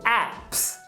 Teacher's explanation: Aplicativos acaba com P, que é desvozeado